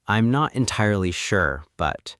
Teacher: drop your pitch at the end of the word sure. Give it a very flat, heavy tone.